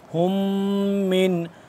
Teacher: اس پہ غنہ ہوگا، میم مشدد ہے